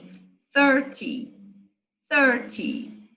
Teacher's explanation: se você falar o 30 a sílaba forte vai ser a primeira